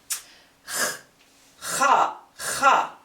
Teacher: Ha is a voiceless pharyngeal fricative. It's articulated in the back of the throat, like breathing on glass to steam it up, or to check your breath if it smells good or not.